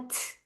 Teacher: ता में हमस है। सांस की आवाज आती है।